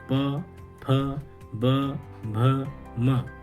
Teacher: और इनका उच्चारण भी अर्ध विसर्ग जैसा होता है। इन सब का उच्चारण ओष्ठ से किया जाता है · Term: ओष्ठ वर्ण